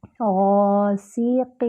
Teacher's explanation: سین میں سیٹی کی بھی آواز آتی ہے